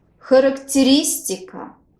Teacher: Here the stress falls on vowel E on the fourth syllable.